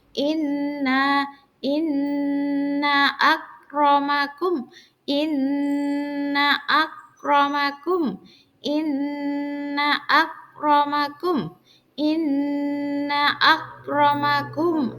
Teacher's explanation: Inna, ditekan 2 harokat, 2 ketukan nggih.